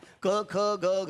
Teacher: याला कंठ्य म्हणतात. कंठे का? कारण ते कंठातून येतात म्हणून